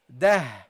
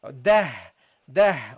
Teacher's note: And what happens also is this letter becomes a Ha, because whenever a Ta al-marbuta is non-voweled, it will become a Ha